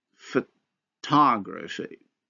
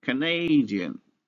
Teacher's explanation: examples from English where a vowel is reduced to a schwa in case it is not stressed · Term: vowel reduction